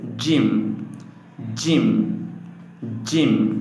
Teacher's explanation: জিহ্বার মধ্যখান তার বরাবর উপরের তালুর সঙ্গে লাগাইয়া উচ্চারিত হইবে।